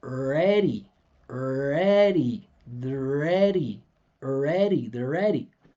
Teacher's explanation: I'm sliding right past the R. You can hear and e and e more than anything else.